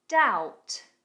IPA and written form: daut (Doubt)